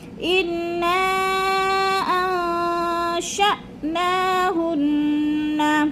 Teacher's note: نون کو سختی سے جماؤں کے ساتھ پڑھنا ہے، غنہ کرنا ہے